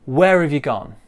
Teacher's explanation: get rid of that H sound. It's of. The R joins the A and we get whereof. Whereof. The U becomes ya.